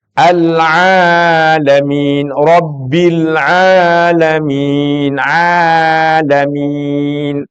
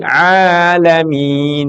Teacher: itu ainnya masuk Di dalam tenggorokan tapi kalau kita hanya baca di rongga mulut menjadi alifbilamin berubah